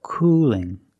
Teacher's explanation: It's a light L because it's between vowels.